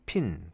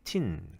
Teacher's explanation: 이런 aspirate된 그런 사운드 그런 것들을 스프레드 글로티스. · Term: aspirated consonant